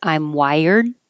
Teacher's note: you won't hear the D by itself I'm wired but you will hear it if there's a vowel